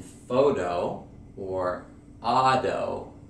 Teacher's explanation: the flap T and it's pronounced as a D for example in photo or Auto notice the D sound Auto